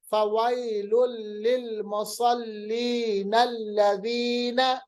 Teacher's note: आपने देखा नून को जब हमने लाम के साथ मिलाया तो या की आवाज को हमने ज्यादा लंबा नहीं किया, बल्कि एक अलिफ के बराबर इसको लंबा किया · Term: मद असली